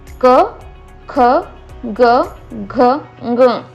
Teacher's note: हे जे वर्ण आहेत ते कंठातून निर्माण होतात, म्हणून त्यांना कंठ त्यांचं उच्चारण स्थान आहे. · जेव्हा तुम्ही क वर्गाचं उच्चारण करता तेव्हा तुमच्या कंठामध्ये हालचाल निर्माण झाल्यासारखं, थोडंसं व्हायब्रेट झाल्यासारखं वाटतंय